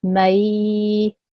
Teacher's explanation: the ma I will pronounce as normal, but I add an a sound for 2 seconds. So may, 2 seconds long at least, okay? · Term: ya leen